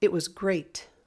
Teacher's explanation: don't say great and we're not going we're not going up we're just saying it louder and it goes up like great